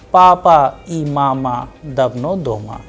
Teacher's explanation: It is a very simple statement, simple sentence, that is why the sound is flat.